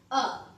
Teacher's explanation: अ कंठ स्थानीय ध्वनि है